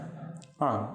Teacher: குற்றியல் உகரங்கள் இதழ் குவியாது உச்சரிக்கப்படுகின்றன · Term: குற்றியல் உகரம்